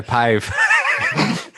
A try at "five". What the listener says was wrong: five, not pive. Five.